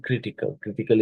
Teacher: the stress is in the first syllable right not the second